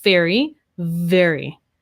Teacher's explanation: is i'm using my voice right feel that vibration very very so the v is the voiced f sound · i'm going to add my voice so it's all here right my teeth are touching my bottom lip so the only difference is i'm using my voice